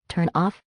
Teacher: turn ends with a consonant sound, the N, and off begins with a vowel sound, the O. We link them together. It sounds like one single word, turn off. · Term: linking